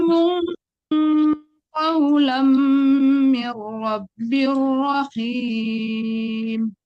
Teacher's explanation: jangan diizharkan tapi didengungkan, diikhfakan. Salamun dengung, jangan mun ya.